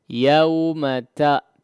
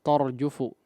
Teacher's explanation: Yauma ta ya fathahnya disempurnakan, jangan tor ya torjufu ya.